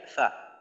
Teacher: সামনের উপরের দুই দাঁতের আগা নিচের ঠোঁটের পেটের সঙ্গে লাগাইয়া।